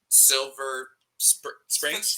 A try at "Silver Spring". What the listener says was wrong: Yeah, you say it with the S, then they already know you're Not local.